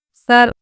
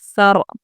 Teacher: सर, देखिए सा रॉ ज़बर सर, हमने पढ़ा है कि जब हम आयत पर रुकेंगे तो ज़बर पर वक़्फ़ करेंगे तो जज़म देकर सांस तोड़ेंगे, तो ये रॉ साकिन हो जाएगी, यानी जज़म वाली रॉ। तो रॉ साकिना से पहले ज़बर होने की वजह से हम रॉ को पुर पढ़ेंगे